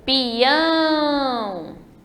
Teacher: o peão, veja que a última sílaba é a forte, então ela é uma oxítona.